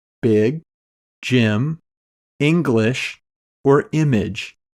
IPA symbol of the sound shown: ɪ